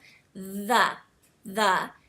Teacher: you should feel sort of a buzzing feeling on your tongue like it sort of vibrates a little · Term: th sound